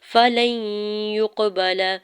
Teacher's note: فلن یقبل، فا کے زبر کو جلدی سے ادا کرنا ہے، لام کے زبر کو یا مشدد کے ساتھ ملاتے ہوئے ادغام مع غنہ کا رول اپلائی ہو رہا ہے، یا مشدد پہ گنہ کریں گے، یا کی پیش کو قاف ساکن کے ساتھ ملاتے ہوئے کلکلا کرنا ہے، با کے زبر کو لام کے زبر کو بغیر کھینچے ہوئے ادا کرنا ہے۔